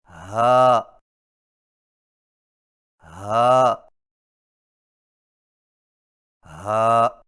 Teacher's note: ہا کی آواز حلق سے بغیر رگڑ کھائے نکلتی ہے